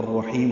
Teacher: جہاں ادغام شمسی ہو رہا ہوتا ہے وہاں پہ لام نہیں پڑھا جاتا، یا الف لام دونوں نہیں پڑھے جاتے۔ را پر ہے، ہا وسط حلق سے ادا کریں گے، لمبا کریں گے، اور میم پہ ہم نے وقف کر دیا تو الرحیم ہو جائے گا، یعنی بسم اللہ الرحمن الرحیم۔